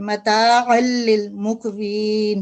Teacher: कलकला भी करेंगे, लाइट कलकला, और कॉफ की आवाज थिक भी निकालेंगे इधर